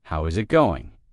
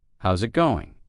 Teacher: Instead, how is it going becomes how's it going. The is disappears and the final G in going often softens. This is called connected speech.